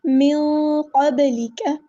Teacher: من پہ ہم یہاں پر اخفا کریں گے، نون کی آواز کو چھپا دیں گے لیکن پور اخفا کریں گے